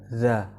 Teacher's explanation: Letak makhorijul hurufnya itu al-lisan, yaitu ujung lidah keluar sedikit bertemu dengan ujung gigi depan bagian atas. Sifatnya ajahr. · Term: huruf za